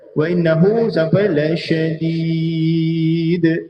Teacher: Hanya di akhir selepas 4 second ataupun lebih kurang 4 harakat, baru kita tekan makhraj dal.